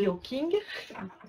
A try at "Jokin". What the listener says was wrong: Vous nous excusez, ça s'écrit Joking, mais il faut prononcer un peu Un peu à l'anglaise, c'est-à-dire qu'avec un TH à la place du J.